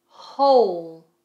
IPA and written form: həʊl (Whole)